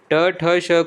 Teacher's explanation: ट ठ ष का उच्चारण स्थान है मूर्धा